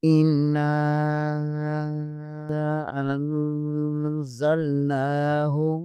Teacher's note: نون مشدد ہے، یہاں پر غنہ لازمی ہوگا، · الف کے اوپر مد بھی ہے، اس سے ڈائی 3 الف کے برابر کھینچیں گے۔